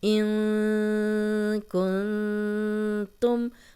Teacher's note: اب نون کی آواز کو ہم تھوڑا سا چھپا کے پڑھ رہے ہیں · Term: غنہ